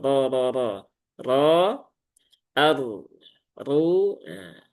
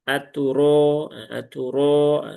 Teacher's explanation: Aturo ya aturo rnya. harakatnya fathah berarti dia dibaca dengan tafhim